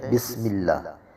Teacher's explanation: سین میں آواز، اس میں سیٹی کی آواز پیدا ہوگی